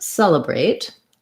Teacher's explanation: celebrate also has first syllable stress